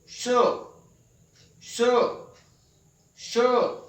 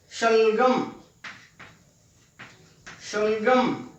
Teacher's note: इसको बोलते हुए हमारे मुंह के अंदर जो जीभ है वो तालू की तरफ उठती है, तब हम इसका उच्चारण करते हैं। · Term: तालव्य